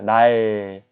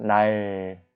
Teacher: 혀 끝이 입천장에 갖다 대면서 혀의 양쪽으로 공기가 새어나옵니다. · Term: 유음